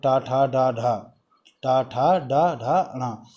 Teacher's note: टा वर्ग जो है उच्चारण स्थान इसका है मूर्धा